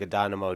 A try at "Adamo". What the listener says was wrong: Nope. Added an extra syllable. Adamo.